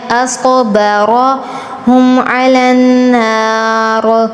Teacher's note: صاد اور را پر تفخیم کرنی ہے، أصبرهم على النار، نون پر اخفا کرنا ہے، را پر تفخیم کرنی ہے، على النار.